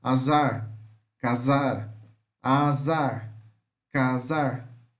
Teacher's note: Z, fricativa alveolar sonora